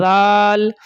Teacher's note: ذال کو پتلا کر کے بولنا ہے، ہلکا سا زبان کو اوپر لگانا ہے، نوک زبان کے نوک کو اوپر لگانا ہے